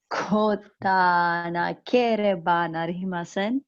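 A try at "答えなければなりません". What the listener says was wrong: Not quite. There's a vowel missing there.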